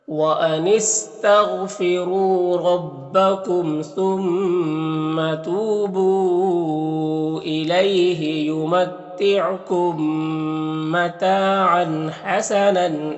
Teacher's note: یہاں پر تنوین میں اخفا ہوگا، تنوین کی آواز کو ناک میں چھپا کر پڑھیں گے۔